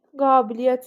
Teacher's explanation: qabiliyyət sözündə a uzanır. Qiyyət biri düşür.